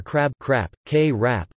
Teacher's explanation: ครับ (khrap, [kʰráp], with a high tone) when the speaker is male